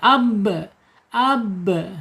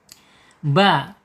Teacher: asyidah yaitu tertahannya suara ab ya, tertahan dia ya.